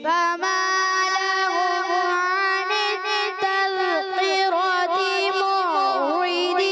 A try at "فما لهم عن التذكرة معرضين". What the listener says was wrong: اب تھوڑا کاف موٹا محسوس ہوا. فما لهم عن التذكرة معرضين.